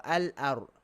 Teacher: Al-ar dekat. Lam tu hujung lidah sama-sama. So dia boleh idgham.